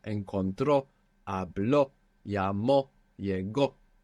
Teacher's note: We're ending in a vowel and we have the accent on the end.